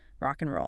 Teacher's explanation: You see it with and right. It's rarely and. It's usually just n. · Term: weak forms